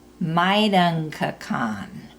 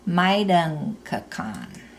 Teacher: you have to remember to change the M to an ng sound before the K.